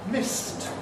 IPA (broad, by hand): mɪst